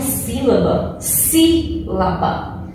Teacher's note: Então, o pedaço aí, né, na sílaba que tem mais força aí, né? A posição dela que tem mais força é a antepenúltima, para ela ser classificada como proparoxítona.